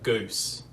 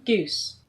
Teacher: you hear goose fronting in australia